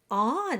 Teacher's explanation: Then you have E and N, which is on. It's just you start with an A and you nasalize into on. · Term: nasalized vowels